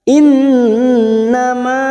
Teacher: nun yang bertasdid gunna musaddadah kita tekan selama 3 harokat.